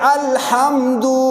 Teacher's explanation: ہا درمیان حلق، وسط حلق گلے کے درمیان سے ادا ہوتا ہے